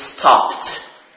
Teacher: Stop. So this verb ends with the voiceless sound p.